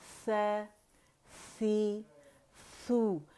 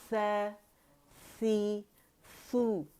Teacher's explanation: अच्छा, सा के अंदर बहुत ज़्यादा अच्छा हवा है, हम्स कहते हैं इसे ना, तो उसे हाथ पे फील करें, सामने रखें अपने और हवा को फील करें, ठीक है।